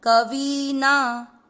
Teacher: वी की मात्रा बड़ी, लंबा खींचना है